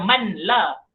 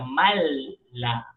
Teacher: Tidak perlu dibaca dengan dengung. Nun mati bertemu dengan huruf lam. Huruf idgham bilal ghunnah dia pun dimasukkan. Jangan baca man la.